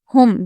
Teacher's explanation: ہم میم کو ظاہر کریں گے، یعنی کہ یہ ہو جائے گا اظہار شفوی